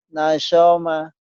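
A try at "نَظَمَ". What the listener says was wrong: Nah, bukan nasoma, nazo, zo, nazoma, nazoma, zo ya. Seperti ada unsur z tapi enggak. Nazoma, zo, nazoma.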